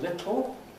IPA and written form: ˈlɪtɫ (little)